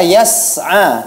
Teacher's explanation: Jadi ini perlu diperhatikan ya untuk peserta yang kelima. Pada kata yas'a, tidak ada qalqalah pada huruf sin.